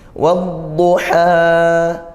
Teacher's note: Di sini ada hukum dalam ta'rif, yaitu idgham syamsiyah, karena dia al bertemu huruf dhad